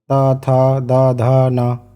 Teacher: जब इन वर्णों का हम उच्चारण करते हैं तो ऊपर वाले वाले दांत में हमारी जीभ लगती है। त थ द धा न ये दंतव्य वर्ण होते हैं।